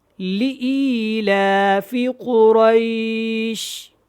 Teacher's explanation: لام زیر لی ہے، لام زیر لے نہیں ہے، اور یہاں پہ حمزہ یازر ای ہے، اے نہیں ہے